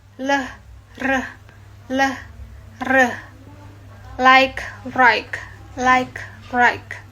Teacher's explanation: L. Tongue tip touching alveolar ridge. And then R. Tongue bunch or retroflexed.